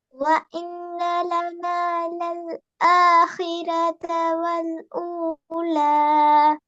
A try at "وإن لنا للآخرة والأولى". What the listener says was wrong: இன்னும் கொஞ்சம் அந்த ஆ என்று போறத க்கு மாத்தணுமா? அதான் அடுத்து பேர் ஆறுவது ஆஹிரத்த அல்ல ஆஹிரத்த அ. இங்கிலீஷ்ல வர நீ இப்படி ஞாபகம் வச்சுக்கொண்டா சரி. இங்கிலீஷ்ல வர பிடிச்சிருப்போம் ஆண்டா உச்சரிப்போம். ஆ புக் அப்படியா? a புக் a pencil a பென் அப்படித்தானே? அந்த ஏவன் ஞாபகம் வச்சுக்கொண்டு அந்த ஏட ஸ்டைலுக்கு நீங்க மாத்திட்டீங்கன்னா சரி. ஏ என்று போனா பிரச்சனை போயிடுது. ஏ புக்னு சொல்ற இல்லையே. ஏன்னா a புக் a பென் a pencil என்று சொல்றது போல அந்த சவுண்டுக்கு நாங்கள் எடுத்துக்கொண்டா சரி.